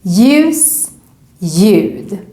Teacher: Next combination, LJ. Also here, when we see a word with this combination, we just ignore the L and just pronounce it as J · we ignore the first letter and just think that we need to do a Y sound